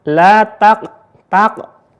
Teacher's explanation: pantulannya kecil dan ini juga disebut dengan hukum qolqala sugro pantulannya kecil